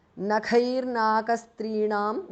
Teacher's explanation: visarga changes to repha or r